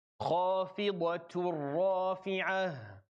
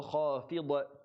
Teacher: So you go from the ta to the ra immediately. There's no ghunna at all. There's no noon. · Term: idgham kamil bila ghunna